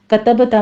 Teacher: کتبتا میں با کے اوپر قلقلہ کریں گے